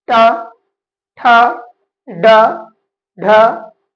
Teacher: ऋ का उच्चारण स्थान है मूर्धा। ट वर्ग ट वर्ग के जितने भी वर्ण होते हैं उसका उच्चारण स्थान भी मूर्धा ही है। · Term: मूर्धन्य